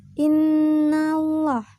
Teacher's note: Cara membacanya dengan mendengungkan dan ditahan 2 harkat sebelum menyebut jelas huruf nun tasdid ini